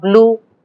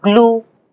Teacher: English makes a contrast between ba and ga, pa and ka before la.